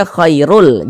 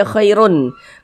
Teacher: Nah, kemudian dia bila ghunah. Jadi dimasukkan kemudian tidak disertai dengan ghunah. Dia tidak didengungkan. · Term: idgham bila ghunah